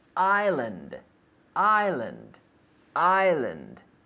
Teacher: No S. Well, there is an S, but we don't pronounce it.